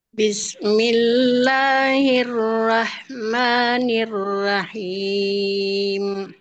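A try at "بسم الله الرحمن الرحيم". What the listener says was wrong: Rnya agak tebal Bunda.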